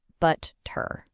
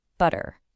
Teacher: The t just vanishes. And in its place is that little catch in the throat.